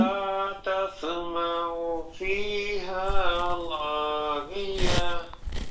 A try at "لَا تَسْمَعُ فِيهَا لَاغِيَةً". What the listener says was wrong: لا لو نہیں پڑھ, موٹا نہیں کرنا, لاغیہ لا